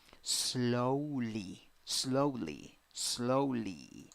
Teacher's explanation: Next, 6 letters, 5 sounds, 2 syllables. The first syllable is the stressed syllable, and you have O wearing a hat.